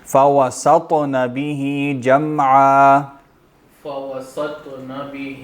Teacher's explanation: طا بھی حروف قلقلہ میں سے، وہاں بھی آواز ٹکرائے گی، موٹا پڑھیں گے